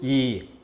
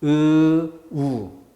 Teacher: 연쇄적으로 발음하면서 혀가 앞으로 내밀어지는지, 우. 혀가 당겨지는지. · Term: 전설